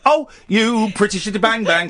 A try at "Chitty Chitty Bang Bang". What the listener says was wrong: You're saying Chitty Bang You're not saying Chitty. No, when you were singing, you were singing.